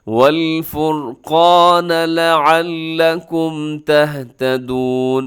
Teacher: والفرقان میں کیا ہے، قاف موٹا پڑا جاتا ہے ہمیشہ، ساتھ الف وہ بھی موٹا ہو جائے گا، اور را بھی موٹا پڑا جاتا ہے کیونکہ را سے پہلے والے حرف کے اوپر پیش ہے